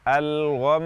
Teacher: Misalnya ketika kita waqaf pada kata al-ghammi, maka kita waqaf dengan menahan gunnah lama tanpa aksentuasi, tanpa an-nabr. Jadi kita baca dengan al-gham, gunnah yang lama sudah menunjukkan bahwa huruf tersebut bertasydid.